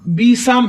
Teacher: सीन को सीटी की आवाज भी देंगे